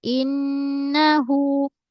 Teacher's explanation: Nun saddu pastikan ghunnah dua harakat. Wajibal ghunnah. Suara naik ke hidung. In lama sikit.